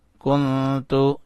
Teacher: سین عین زبر سا، یا زبر یا، سایا، کاف نون پیش کن، تا پیش تو، کن تو، یہاں نون کے اوپر اخفا کیا، نون کو چھپایا